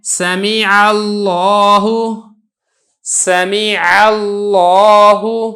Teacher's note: لفظ اللہ سے پہلے زبر ہے لہذا لفظ اللہ کو موٹا کر کے ادا کی ہے